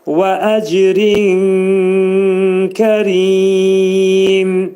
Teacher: Rin dedikdə nun səsi kəfə yetişir və ixva olur. Kəfin məxrəcində gizlədirik.